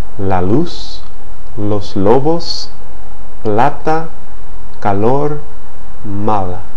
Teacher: the mouth in English in a Spanish sequence like Lao right the tip of the tongue is positioned against the ridge behind the front teeth and air escapes laterally